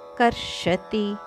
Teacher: ತಿ ಶ್ಲೋಕದ ಕೊನೆಯಲ್ಲಿ ಬಂದರು ಸಹ ಇದನ್ನು ಹರಸ್ವವಾಗಿ ಉಚ್ಚಾರಣೆ ಮಾಡಬೇಕು ಇಲ್ಲದಿದ್ರೆ ನಮಗೆ ಅಭ್ಯಾಸದ ಪ್ರಕಾರ ಕರ್ಷತಿ ಅಂದ್ರೆ ತಪ್ಪಾಗುತದೆ ಕರ್ಷತಿ ಅಷ್ಟೇ ಹೇಳಬೇಕು ಪೂರ್ಣ